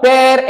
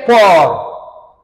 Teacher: la différence se trouve entre le E ouvert et le O ouvert. Ça fait de père et port une paire minimale.